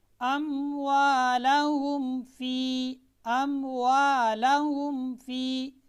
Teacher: मीम साकिन के बाद बा, मीम और अलिफ के अलावा, यानी मीम साकिन के बाद ना बा आए, ना मीम, ना अलिफ, बल्कि बाकी 26 रूप में से कोई भी हर्फ आ जाए तो मीम को उसके मखरज से ज़ाहिर करके पढ़ेंगे, वाज़ेह करके पढ़ेंगे।